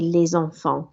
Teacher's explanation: because it's followed by a vowel, there's a liaison sound there, so the S becomes a Z